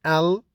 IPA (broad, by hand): l